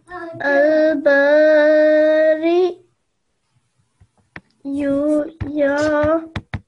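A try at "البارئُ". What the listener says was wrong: Okay, remember we're not going to pronounce the ya. You have to imagine that there's no ya there. We're only pronouncing the hamza.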